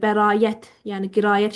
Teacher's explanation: Bəzən tələbələr yanlış tələffüz eləyib bəraət, yəni qirayət şəklində tələffüz eləyirlər. Sait qoşaqların arasında yı samitini əlavə eləyirlər. Təbii ki, bu səhv bir tələffüzdür.